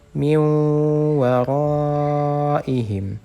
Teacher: Nah, ini nun sukun, kemudian setelahnya huruf waw juga harus digunnahkan dengan panjang atau dengan tempo gunnah 2 harokat